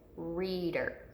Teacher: team okay we've got the Val team ei right here reader we hear that long e right here in the first syllable · We hear that long E right here in the first syllable. So our accented E is in the first syllable.